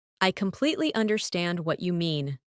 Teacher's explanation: Emphasize completely and understand.